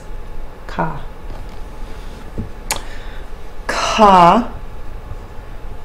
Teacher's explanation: the aspirated voiceless consonant in the guttural part of the mouth